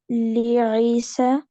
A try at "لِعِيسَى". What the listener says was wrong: यहाँ भी ई सही नहीं पढ़ना, ठीक है। सी भी नहीं पढ़ना, ईसा।